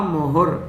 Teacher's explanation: मुहु विसर्ग है आगे, मुहु यहाँ विसर्ग नहीं रह सका, र आ गया उसकी जगह पर।